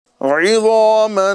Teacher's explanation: عین کی آواز واضح طور پر نکالنے کی عادت بنائیں، عین کی جگہ ہمیں حمزہ ادا نہیں کرنا ہے